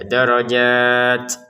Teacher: Darajatnya kita baca 6 harakat karena berhenti. · Jadi kalau berhenti darajat ya untuk zatnya ini enam harakat. Kemudian t-nya kita keluari nafas ya dikit ya.